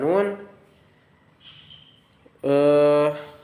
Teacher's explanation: Yang pertama ada nun. Asalnya itu dari hidung. Sifatnya itu sedang dan bersuara tipis.